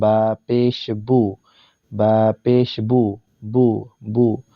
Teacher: আমরা এই প্রত্যেকটা হরফ যখন উচ্চারণ করব তখন কিন্তু আমাদের ঠোঁটগুলো গোল করে নিব। পেশের উচ্চারণ ঠোঁট গোল হবে